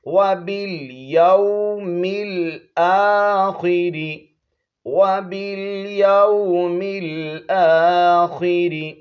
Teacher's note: با کو لام کے ساتھ ملائیں گے، یہ الف نہیں پڑھا جائے گا